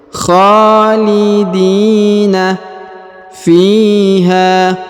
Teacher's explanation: Huruf di dipanjangkan 2 harokat karena di depannya terdapat ya sukun.